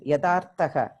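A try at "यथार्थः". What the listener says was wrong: It is not Yada. It is Yatharthaha. Mahaprana Dantyatthara. Yatharthaha. Tamil influence varama paathukonum. Yatha plus Arthaha.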